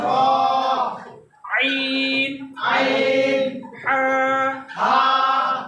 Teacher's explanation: 2 নম্বর মাখরাজ হলফের মধ্যখান হইতে আইন হা